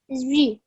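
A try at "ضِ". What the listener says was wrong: Okay, remember we talked about that, not making that sound of a wow in the middle of pronouncing this letter.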